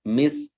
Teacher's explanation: Ya, perhatikan jangan sampai huruf kafnya karena dia didahului oleh huruf yang bersukun, jangan sampai kafnya tidak kedengaran dengan baik. Tetap juga harus dilafazkan sukunnya dengan baik dengan menyisakan hamsnya juga.